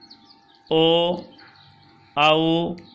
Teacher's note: कंठोष्ठ, कंठोष्ठ भी दो होते हैं, कंठ और ओष्ठ। जो वर्ण कंठ और ओष्ठ दोनों से मिलकर बोले जाते हैं उनके उच्चारण स्थान कंठोष्ठ कहलाते हैं